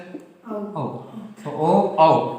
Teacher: ओ औ को कंठ और ओष से बोलना शुद्ध है